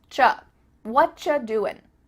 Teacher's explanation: actually we've cut out completely the word are and the word you just becomes cha